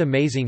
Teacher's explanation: the word amazing has primary stress on the second syllable, while the first and third syllables are unstressed